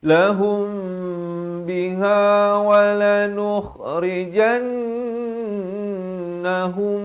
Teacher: Jan dua harakat dengung, hum dua harakat dengung di sini. Ini wajibul gunnah, ini idgham mislan saghir, mim mati bertemu mim.